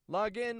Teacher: Notice I'm still getting a clear ah sound in that word log. Log in, but I'm raising my tone for the in.